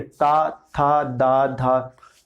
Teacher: दांतों पे जीभ लग रही है, ठीक है, तो इसे कहेंगे दंत्य